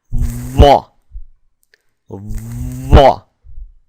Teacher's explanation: put the tongue flat up against the upper teeth and then push downwards while voicing the vocal cords